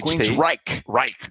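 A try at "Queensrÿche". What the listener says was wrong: Queen's Reich. Right. Yeah, you got to say it. You can't say it like it's two words. It's one word.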